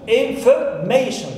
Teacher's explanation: So, may is my stressed syllable. It's third one here.